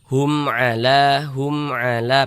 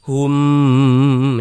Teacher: Maka hukumnya izhar syafawi. Karena dia izhar, maka dibaca jelas, tak berdengang. Baca pendek saja.